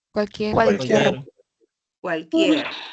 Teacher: vocal cerrada I y vocal abierta e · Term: diptongo